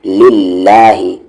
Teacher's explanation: یہاں پر زیر ہے لام جلالہ سے پہلے، اسی لیے یہ لائٹ یعنی کہ پتلی آواز سے پڑھی جائے گی